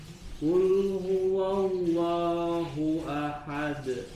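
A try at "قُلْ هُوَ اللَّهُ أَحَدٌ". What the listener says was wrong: Tarik sebentar di huruf lamnya. Kul.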